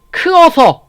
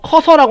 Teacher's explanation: 의탈락, 동일모음 탈락. 의탈락 커서, 크어서 라고 안하고 커서라고 한다는 거.